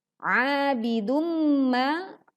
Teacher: Abidumma, a-nya panjang 2 harokat, lalu bidumma bacaannya dengung karena ada dhammah tanwin bertemu dengan mim